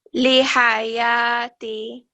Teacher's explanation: So remember, this ha is always the back of the throat